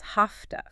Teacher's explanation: Okay, again, a learner might say every sound have to. But in natural speech, have to almost always becomes hafta.